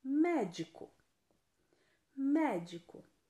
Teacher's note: a antepenúltima sílaba é a mais forte antepenúltima sílaba mais forte então eu vou classificá-la como proparoxítona